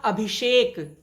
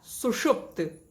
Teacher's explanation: ई और स मिले तो स परिवर्तित हो गया श में, मूर्धन्य श में। इस प्रकार बन गया अभिधन सेक से अभिषेक इसी प्रकार सु धन सुप्त तो बन गया सुषुप्त।